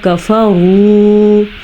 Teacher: لمبا کرنا ہے اس کو کیونکہ واو مدہ ہے